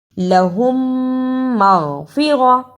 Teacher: ادا کرنے کا طریقہ، دونوں میم کو ملا کر غنے کے ساتھ شد بھی ادا کرنا ہے، یعنی میم ساکن کی آواز کو تھوڑی دیر منہ میں چھپا کر غنہ کرنا ہے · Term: ادغام شفوی